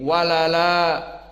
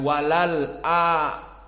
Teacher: Hamzahnya dihafuz dan harokat hamzah dipindahkan kepada lam yang kedua menjadi walala, bukan walal a. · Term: naql